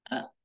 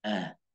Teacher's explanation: Kalau hamzah dia agak belakang, sama-sama di pangkat tenggorokan, cuma hamzah belakang, depannya ha.